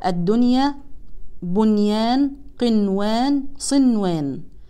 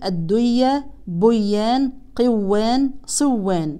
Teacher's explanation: ولكن تقرا النون مظهره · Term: اظهار مطلق